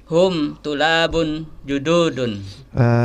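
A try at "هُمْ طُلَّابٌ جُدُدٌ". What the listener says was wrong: Di huruf lamnya itu ada tasdidnya ya. Hum tulabun. Iya, dunya panjang nggak? Pendek ya. Kita kalau sudah tahu dunya pendek, jududun. Ya berarti jangan dipanjangkan dong. Dunya.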